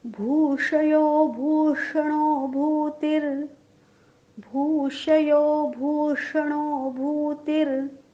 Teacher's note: तिन्ही भू दीर्घच आहेत